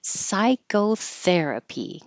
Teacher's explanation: The there is underlined because it's secondary stress, which means it will get longer but not higher.